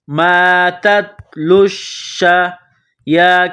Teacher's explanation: یا کڑا زبر یا، ایک الف کے لمٹ میں کھینچنا ہے۔